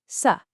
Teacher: The trick is all in your tongue. You just curl the very tip of your tongue back slightly, up towards the roof of your mouth, as you say it.